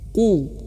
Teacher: maka ketika dhammah nih, maka ibu bapak harus menebalkan ku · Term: tebal